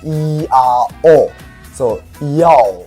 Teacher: some people argue that Mandarin Chinese, which is also my mother tongue, has some form of triphthongs, such as the word for smile.